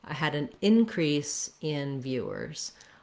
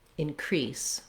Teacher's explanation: the in is long and the crease is short if i say it as a verb then the in is short and the crease is long